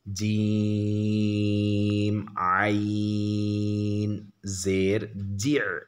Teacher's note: عین قلقلہ میں نہیں ہے، یہاں عین پر جزم ہے، اس میں قلقلہ نہیں ہوگا